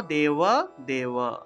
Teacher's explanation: তাহলে সর্বম মম দেওয়া দেওয়া, এই যে দেওয়া আছে না, অন্তস্থ ব, অন্তস্থ বর উচ্চারণটা ওয়া হিসাবে হবে।